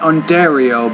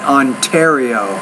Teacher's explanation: Now when you say the T, not Ontario, but Ontario, you need to pronounce your T with a little more air.